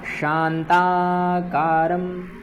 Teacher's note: जैसे शांताकारम, यहाँ जो शा है यह तालव्य शकार है